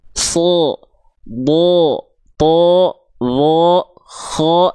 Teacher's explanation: kedengarannya itu enggak betul-betul murni vokal A kan, tapi dia condong seperti vokal O, tandanya dia huruf yang tebal ya.